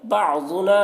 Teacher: یہاں پر ضاد کو پر پڑھیں گے، ضاد حروف مستعلیہ میں سے ہے